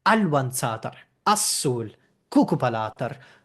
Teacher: you can see that we would end up with stress on the first syllable in all of these cases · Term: end rule left